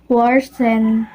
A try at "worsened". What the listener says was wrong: The learner did not pronounce the final ed in worsened, and he substituted when with then.